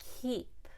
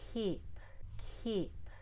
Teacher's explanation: there's a feeling of the air comes out not swallowing it in